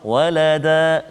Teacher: Adapun jika kita waqaf dekat situ walada, maka dia tak jadilah ikhfa hakiki kat situ. Dia jadi mad iwad. Walada, dengan 2 harakat kita berhenti, kita waqaf.